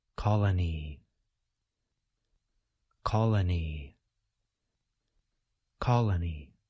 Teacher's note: We can now say the whole word a little bit faster. Be sure that you place stress on the first part of the word.